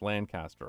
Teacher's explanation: All one name with no emphasis on any part.